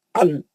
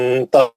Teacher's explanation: انتا، میں دیکھو میں چھپا دیا، میں نون کلین نہیں پڑھ رہا ہوں، میں کیا کر رہا ہوں، نون کی آواز کو چھپا کے غنہ پڑھ رہا ہوں